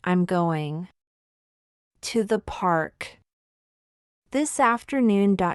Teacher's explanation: Notice how going to becomes gonna in fast speech. It's not wrong, it's natural English rhythm.